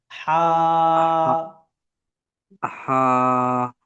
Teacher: হালাক থেকে কন্ঠনালীর ভেতর থেকে